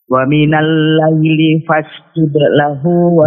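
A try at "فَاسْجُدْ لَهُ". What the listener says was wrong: Jangan fasjud. Qalqalah sughra, qalqalah saat wasal jangan diputus ya. Fasjud lahu. Wa minal laili fasjud lahu. Jangan fasjud, tapi fasjud lahu. Judelahu, jangan diputus.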